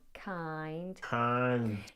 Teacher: dragged out the first part of that sound, making it almost sound like one single monothong.